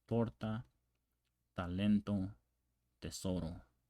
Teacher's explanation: with the tip of the tongue against the back of the upper front teeth. So tip of the tongue, the back of the front teeth.